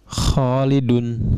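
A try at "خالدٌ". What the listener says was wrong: Khalidun, betul.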